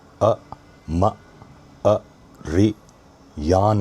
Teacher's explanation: The vowel sequences short, short, short, short, long. There's only one long vowel sound here, and that is yan, yan.